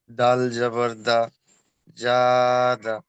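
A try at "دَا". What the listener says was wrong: দাল জবর দা নয়, দাল হরফটি তিন আলিফ পরিমাণ টান আছে।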